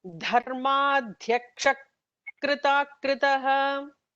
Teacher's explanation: visarga followed by a ka will have like an extra h kind of an emphatic sound there. So it becomes dharmadhyaksha krita kritaha.